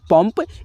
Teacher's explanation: अब दोस्तों यहाँ पे उच्चारण इसका बदल गया, रंजन में दोस्तों न के रूप में उच्चारण आ रहा था, और दोस्तों यहाँ पे जो हमने शब्द लिखा है पंप, इसमें दोस्तों अंग की मात्रा का उच्चारण म के रूप में आ रहा है